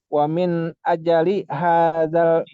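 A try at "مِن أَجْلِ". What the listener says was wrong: Bukan aja. Jimnya sukun. Min ajli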